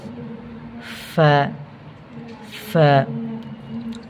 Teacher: নিচের ঠোঁটের পেট সামনের উপরে দুই দাঁতের আগার সঙ্গে লাগাইয়া